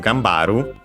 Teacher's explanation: gambaru, by the way, accented, unlike haru on its own